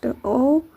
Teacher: औ उच्चारण स्थान कंठ और ओष्ठ दोनों है